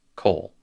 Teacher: it loses its own accent, and so the vowel is unaccented, or the syllable is unaccented, and the vowel shortens to a kametz chatuf